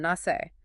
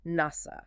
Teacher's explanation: The Hebrew ends in that soft a sound nasi. But the Arabic ends in a long hard a nasa.